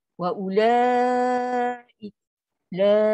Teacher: Waw ni kita tak ada fungsi. Ada pada tulisan baca tak ada. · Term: waw bulat